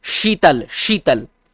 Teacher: जीभ जो है ना तालव्य से सटता है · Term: तालव्य श